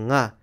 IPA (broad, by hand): ŋ